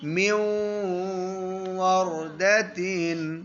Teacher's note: غنہ کریں گے اور نون کو واو میں ملا دیں گے. من یا نون اب نہیں پڑھیں گے، واو بن جائے گی.